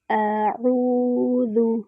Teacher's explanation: اعوذ، واو ساکن ہے، اس سے پہلے ضمہ ہے، واو مد بن رہی ہے۔ واو مد جو ہے الجوف سے ادا ہوتی ہے، یعنی منہ اور حلق کا خالی حصہ۔ اس کو 2 حرکات برابر لمبا کرتے ہیں۔